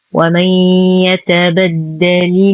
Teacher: ومن نون ساكنة وبعدها حرف الياء. الحكم إدغام ناقص مع غنة كاملة.